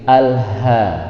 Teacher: suaranya tebal dan dipanjangkan karena ada alifnya, hukumnya matobi.